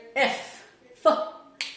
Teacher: so i'm using only the air friction to produce this sound so what i'm doing here i'm pushing the air out from